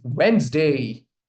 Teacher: We drop this sound. We do not pronounce D over here.